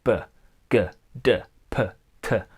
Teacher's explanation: Now plosives are sounds which have an explosion of air along with them.